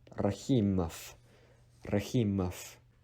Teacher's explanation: Rahimov is a very common Russian last name, and anything that ends with OV in Russian, actually it is pronounced as F.